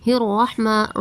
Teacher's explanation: را کو پر کر کے پڑھیں گے، ہا کو واضح کریں گے، میم پر کھڑا زبر ہے ایک الف کے برابر کھینچنا ہے